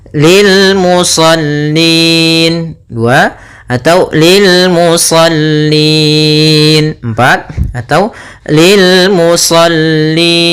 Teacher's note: berupa ya maka ini kita namakan dengan bacaan Mad Arid disukun panjangnya berapa untuk di sini boleh dua boleh empat boleh en harakat